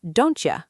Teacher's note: Don't you often becomes don't you with the T and Y blending into a ch sound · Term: assimilation